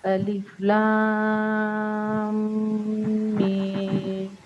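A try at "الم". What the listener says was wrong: میم کو اسٹریچ کیجئے. میم.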